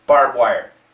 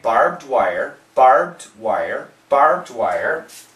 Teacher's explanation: if you listen carefully you can hear the D